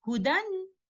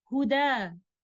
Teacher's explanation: As such, in these examples, you can see the words are ending with a fathatain, but whether the alif is written at the end or not, we will still stop by changing the noon sakina hidden in tanween into an alif, and the word hudan upon stopping will be recited as huda. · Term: Waqf bil Ibdaal